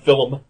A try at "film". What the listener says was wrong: I didn't realize that film had 2 syllables.